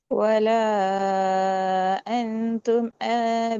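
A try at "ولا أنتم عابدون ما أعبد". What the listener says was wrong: அந்தும் அது உடையுது. அந்தும் உடையுது. அந்தும் அந்தும் என்று உடையக்கூடாது. அந்தும் இம்ட சவுண்ட் அதல்ல உம் அந்தும் அந்தும் அந்தும் அந்தும் என்ற அந்த அல்ல முழுமையா வரணும். அப்பதான் வரும். இல்லைங்க சிலது என்று நீங்க ஓடுறீங்க அடுத்துக்கு. அப்படி இல்லை. அந்தும் உம் அந்தும் அந்தும் என்று கலக்கப்படாது. அது போல அந்தும் என்றதை முழுமைப்படுத்திட்டு போகணும்.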